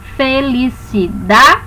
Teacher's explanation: Nessa palavra felicidade, dá para perceber que nós não pronunciamos todas as sílabas com a mesma intensidade. Nós colocamos uma força maior na sílaba tônica, que no caso dessa palavra é o da. Nós levamos mais tempo pronunciando esta sílaba.